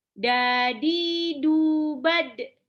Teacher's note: Ini dalnya pantul, dia punya sifat kolkolah, punya sifat syiddah, ya, dan punya sifat jahar.